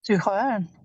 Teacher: make sure to emphasize the prefix because this is a separable verb